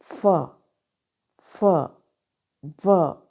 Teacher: अपर front teeth जो हैं वो टच करते हैं लोअर लिप के इनर साइड, इनर पार्ट को। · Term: लेबियो डेंटल साउंड